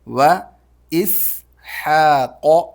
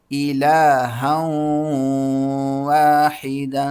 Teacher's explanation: حا حلق سے، قاف موٹا